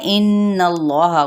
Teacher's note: इन्नल्लाह गुन्ना करते हुए इसमें जलाला का लाम पुर